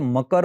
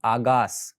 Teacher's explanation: ક નો ગ થવો આ કોમન રૂપ થયું